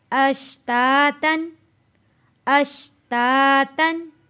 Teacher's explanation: हरूफ़े हल्की है, गुन्ना अदा नहीं किया